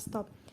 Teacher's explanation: Contoh asimilasi fonetis yaitu bunyi T dalam bahasa Inggris yang biasanya diucapkan secara apikoalveolar tetapi bila terdapat sebelum bunyi S, maka menyesuaikan diri dengan artikulasi lamino-alveolar S menjadi lamino-alveolar T dalam kata stop.